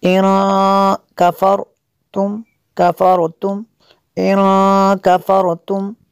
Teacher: نون ساکن کے بعد کاف ہے حروف اخفا میں سے، یہاں پہ اخفا ہوگا اس لیے یہاں پہ غنہ کریں گے۔